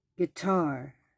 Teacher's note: iambic pattern that stressed the last syllable in fluent speech